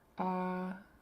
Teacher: we have our high tone double A